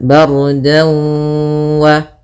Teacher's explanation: Kemudian dawu ada fathatain bertemu dengan waw, maka apabila ada fathatain bertemu dengan waw hukumnya idgham bi gunnah atau ma'al gunnah, yaitu kita masukkan dannya ke waw. Kemudian kita tahan dulu gunnahnya 2 harakat